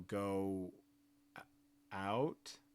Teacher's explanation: And then I have a W that's kind of in parentheses here because when you say go out, you get a little bit more rounded on that first O and then you kind of have a pause. So what you're seeing here is a little bit of extra rounding, a pause, a short pause before out. You can see the transition is beginning before the voicing stops.